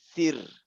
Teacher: Kalau contohnya lah huruf sebelumnya kasroh, jadi sir tipis dia ya.